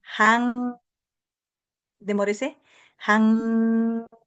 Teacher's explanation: Siente el aire que sale por su nariz. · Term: sonido nasal